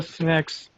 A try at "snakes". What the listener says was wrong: Snakes. This one is long A.